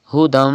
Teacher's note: Meme after 2 zabar after tanween, and meme is a yarmalun letter. Idgham will be done in this word and gunna will also be done. You have to read like this hudam.